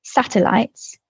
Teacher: the first E is not stressed. It's a weaker syllable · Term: syllable stress